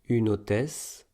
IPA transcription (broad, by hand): ynotɛs